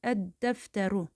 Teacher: Çünki d deyərkən dilimiz üstə təmas edir dilin ucu. Ona görə də biz bura əl hissəciyini artıranda burdakı l oxunmayacaq və d şəddələşəcək. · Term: şəmsi hərfdir